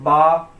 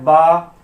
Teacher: دونوں ہونٹ سے مل کر نکل رہا ہے با، تو اس کو حروف شفوی بولتے ہیں.